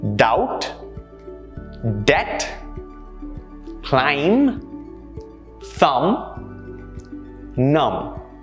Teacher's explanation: where the b sound is silent doubt debt climb thumb num notice how the b sound was never a part of the pronunciations for any of these words